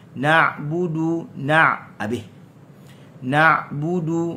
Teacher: Na'budu huruf ain. Dia berada di wastal lisan, wastal halq, wastal halq, dan dia bersifat dengan tawassut. Na'budu, jangan baca na'budu, tak.